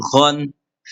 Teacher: গইন হরফ হচ্ছে হলকের শেষ হইতে